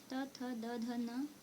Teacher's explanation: इसका उच्चारण दांत से होता है, इस कारण से इसे दंत कहा गया है